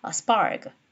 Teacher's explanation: p가 위치했기 때문에 unaspirated p 사운드가 되지 않습니까? 그래서 spark 거의 기식화되지 않은 채로 발음해줘야지 된다